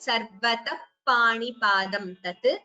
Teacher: a visarga followed by pa, and that would be an upadmaniya